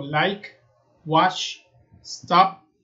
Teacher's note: cuando yo pronuncio el verbo en infinitivo y me toco la garganta y digo like, wash, stop, no hay una vibración aquí. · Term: voiceless